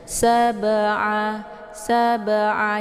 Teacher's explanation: Jadi cara bacanya ba-nya dipantulkan dengan pantulan yang ringan atau pantulannya sekedar saja. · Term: qalqalaf surah